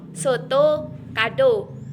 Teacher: Huruf O adalah vokoid belakang, tengah, bulat dan semi terbuka